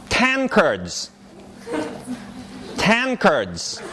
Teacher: The A is fine, but this is nga, not na. And nga is transcribed that way, with an angma, an N with a tail.